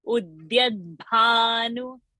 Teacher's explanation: Udyat, the alpa prana, bhanu, bha mahaprana.